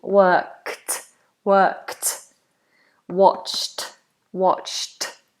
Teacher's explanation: Interesting, isn't it, that ed is pronounced like a T.